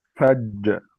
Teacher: جيم حرف مشدد موقوف عليه. حرف مشدد موقوف عليه. مع القلقلة.